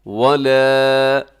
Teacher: الف مدہ ہے اس لیے ہم اس کو لمبا کرتے ہیں، اور یہ باریک بھی رکھنا ہے آپ نے، اس کو موٹا نہیں کرنا۔